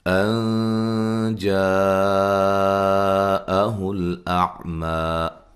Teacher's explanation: یہاں نون ساکن کا اخفا ہے باریک